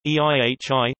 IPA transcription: ihi